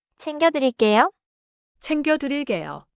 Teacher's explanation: 챙겨 has a tight 기역 sound in 겨